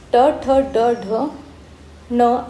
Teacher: हे उच्चारताना जिभेचा शेंडा या मृदेला जाऊन भेटतो त्यांना आपण मृधन्य वर्ण असे म्हणतो